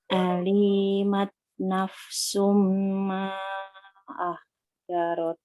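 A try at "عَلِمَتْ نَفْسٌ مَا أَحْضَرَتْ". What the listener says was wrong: Bolang yang alimat, jangan dipanjangin. Kan pendek semua. Alimat, gitu aja.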